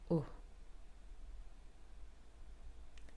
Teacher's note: near close and near back rounded vowel sound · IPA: /ʊ/